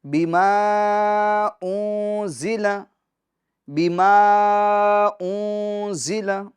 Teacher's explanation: یہاں پر اخفا ہوگا، یعنی گنہ کریں گے، نون کی آواز کو ناک میں لے جائیں گے